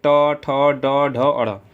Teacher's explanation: वर्णों का उच्चारण मूर्धा से है उन्हें मूर्धन्य व्यंजन कहते हैं। जैसे मूर्धा यानी कि मुख से।